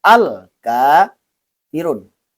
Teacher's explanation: Tandanya alif lam qamariyah ini lamnya itu berbaris mati atau berbaris sukun sehingga dibaca dengan jelas huruf lamnya